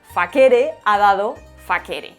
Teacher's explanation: en sardo sí se mantiene el sonido K